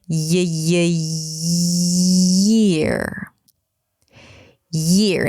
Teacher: for the y, there is that extra push, extra movement almost that creates the y sound